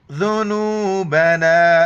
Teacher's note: دال کے وقت زبان باہر نکالنا ہے